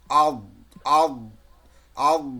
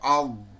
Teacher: আল বলে ওই দাঁতের কিনারায় ওই জিহ্বার কিনারাটা লেগে থাকবে, আল। তাহলে এমনি সিঙ্গেল উচ্চারণ করব তখন দদ।